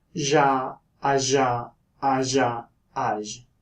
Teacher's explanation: there is the voiced postalveolar fricative, which is transcribed with a yop. This is like a 3-shaped Z, and it sounds like ja, aja, aja, aj.